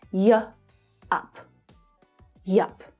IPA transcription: j(ə)ʌp